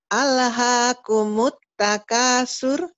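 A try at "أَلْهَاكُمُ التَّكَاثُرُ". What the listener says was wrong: Tapi, tapi alnya jangan ale atuh. Alnya penyakitmu di sini nih. Al. Jangan ale. Alha.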